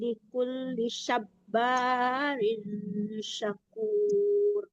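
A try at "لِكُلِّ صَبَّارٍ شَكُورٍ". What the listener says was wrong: Sop, ya Bu, ya jangan sap, tapi sop. Ya, kalau sin tipis, kalau sop tebal. Jadi berbeda bacaannya ya. Sop barin syakur.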